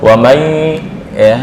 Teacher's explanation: nun langsung masuk ke hidung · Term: idgham bi gunnah